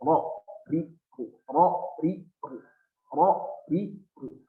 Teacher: Ro itu punya sifat takriri. Ada getaran.